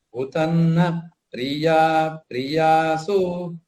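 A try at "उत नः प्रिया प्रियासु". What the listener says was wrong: Uta naha priya. You should take a pause. There is no samyukta. Uta naha priya priyasu saptasvastha sujushta.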